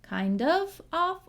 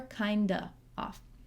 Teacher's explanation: we can say kind of with that v or just kinda and skip it